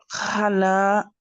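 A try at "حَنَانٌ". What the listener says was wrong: Attention, parce que moi j'entends un ha. He. He. Hanan. Hanan. Hananu.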